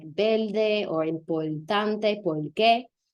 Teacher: how R sometimes becomes L when it's before a consonant